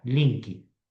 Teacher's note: Colocamos uma vogal no final e já virou brasileira.